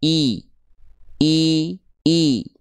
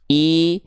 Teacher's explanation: Rendahkan rahang bawah kita. I dan angkat bagian tengah lidah. Biar vokal I ini enggak condong pada vokal E. Nah, ya. Seringki kita baca I tapi enggak jelas, Teman-teman.